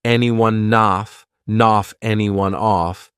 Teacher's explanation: Off starts with a vowel, and anyone it ends on an N sound. So I can take that N and just add it in front of the vowel.